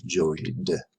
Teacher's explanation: The sound is oi. Oi is voiced. So voiced goes with d.